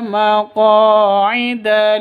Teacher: qa panjang dua ketukan karena ada alif diawali dengan fathah, mad asli atau mad tabi'i.